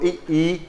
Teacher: आपकी जीभ आगे का हिस्सा काम करेगा, पीछे का नहीं चलेगा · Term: अग्रस्वर